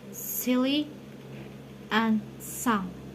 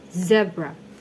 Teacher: This tongue twister contrasts s, voiceless alveolar fricative, and z, voice alveolar fricative. Both are made by directing air over the tongue at the alveolar ridge, but z use the vocal cord z.